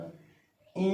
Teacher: इया जो है तालु और नासिका से बोला जाएगा। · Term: नासिक के व्यंजन